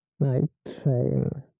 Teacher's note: when pronouncing double consonants, just hold the sound momentarily as in distinguishing night train from night rain